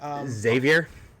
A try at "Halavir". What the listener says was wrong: No, there's an L in there.